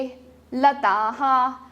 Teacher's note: विसर्ग को हम ह के जैसे साउंड करते हैं।